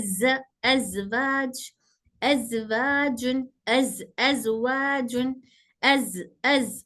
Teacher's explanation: का तरीका अलग-अलग है ओके जैसे देखिए ज ज का तलफ्फुज ज बोलने पर हल्का सा वाइब्रेशन महसूस होता है